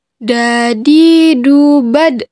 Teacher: Keluar dengan cara menyentuhkan ujung lidah ke gusi bagian atas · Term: huruf da